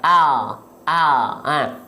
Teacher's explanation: Kalau huruf L pada abjad alfabet itu dilafalkan hanya ujung lidah saja yang menempel. Al. Hanya ujung akhir lidah saja yang ditempelkan ke langit-langit biasanya.